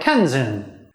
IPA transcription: tɛnzɪn